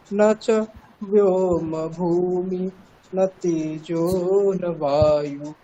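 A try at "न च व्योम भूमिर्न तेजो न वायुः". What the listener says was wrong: তৃতীয় লাইনটা হলো না, তৃতীয় লাইনটা একটু উপরের দিকে উঠবে, ঠিক আছে।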